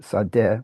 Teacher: from Turkish sade with no nasal and simply the D